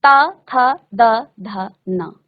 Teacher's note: महसूस करेंगे, 5-5 बार सभी बच्चे मुख से उच्चारण करेंगे तो आपको महसूस होगा कि आपके हर वर्ण का उच्चारण करते समय, यानी कि त वर्ग के हर वर्ण का उच्चारण करते समय आपकी जीभ आपके दांतों को स्पर्श कर रही है, यानी इसका उच्चारण स्थान है दंत, इसको दंत्य कहा जाता है।